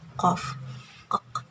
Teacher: Dan yang selanjutnya adalah qosiyah lahwiyah, atau bertemunya ujung lidah dengan anak tekak, atau bisa disebut juga darsouvular